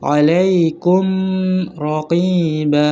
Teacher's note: hukum mim sukun, yaitu ini izhar syahwawi, yaitu dibaca jelas di bibir dan tertutup